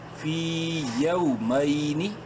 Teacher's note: واو لین ہے، یا کو شارٹلی پڑھیں گے